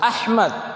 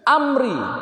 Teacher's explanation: jelas bacanya karena huruf hamzah ini tipis, dia berada di pada aqsal halq